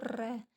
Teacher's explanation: र तो ये कंपन हो रहा है एक तरीके से तो इसलिए प्र कंपित बोलते हैं इसको · और लुंठित भी इसलिए कहते हैं, जब हम रह बोलते हैं तो हमारी जो जीभ है वो थोड़ी सी फोल्ड हो जाती है, तो इसलिए इसे लुंठित भी बोलते हैं। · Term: प्र कंपित व्यंजन, प्रकंपित व्यंजन